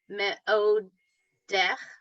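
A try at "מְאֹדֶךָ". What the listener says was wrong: One more syllable. Ma'odeh.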